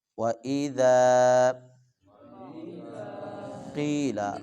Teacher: قاف کو موٹا کر کے پڑھیں گے اور تھوڑا سا لمبا بھی کریں گے